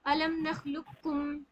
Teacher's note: مشدہ والا حرف یعنی کہ اس کو باریک پڑھنا ہے, اس کو پر نہیں بنانا